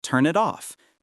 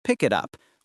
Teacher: The final consonant of one word connects to the first vowel of the next word. This is called linking, and it is one of the main features of natural English pronunciation.